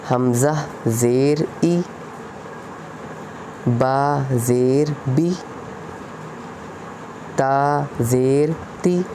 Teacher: तख्ती नंबर 3 हरकात ज़ीर। ज़ीर को मारूफ पढ़ा जाए, मारूफ मतलब पतला पढ़ा जाए, बारीक पढ़ा जाए, और मजहूल आवाज़ से बचा जाए